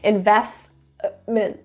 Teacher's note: the three consonants together make a cluster and in this case the T absolutely is dropped it's too much work investment it doesn't work so we're just